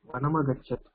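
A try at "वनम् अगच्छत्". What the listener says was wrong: அத பிரிங்கோ வனமகச்சத்ல ரெண்டு சப்தம் இருக்கு இல்ல வனம் ஹலந்த் இருக்குல்ல வனம் அகச்சத் வெரி குட் அகச்சத் அகச்சத்னா என்ன வனம் அகச்சத் வனத்துக்கு போனான் இல்லையா அப்ப அகச்சத்ல என்ன தாத்து இருக்கு தெரியுமா ரூட் இருக்கு தெரியுமா கம் தாத்து லங்லகாரக சரியா லங்லகாரக நான் கேட்பேன் இப்போ எல்லார்கிட்டயும் ஓகே படிங்க யாரு நான் இப்போ சின்ன சின்னதா क्वेश्चन கேக்குறேன் ஸ்ரீநாத் ஜி சொல்லுங்க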